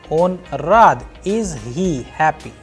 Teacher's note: So I am asking a question, the pitch of the sound is going higher